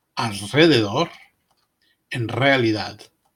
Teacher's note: In the middle of a word, the R is rolled much like a double R after L or N.